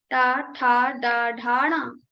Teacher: While saying these letters, you have to touch your murdha with your tongue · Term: ta varga